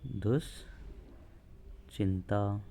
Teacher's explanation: विसर्ग के बाद चर तो विसर्ग के स्थान पर तालव्य है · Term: तालव्य स